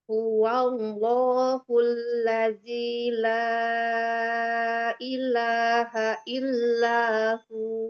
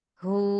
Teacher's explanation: Panjangkan hu ketika kita wakaf di situ. Baca dua wawunya ya.